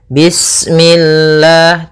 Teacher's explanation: lafal Allah ketika sebelumnya kasrah maka dia dibaca dengan tipis ya dengan l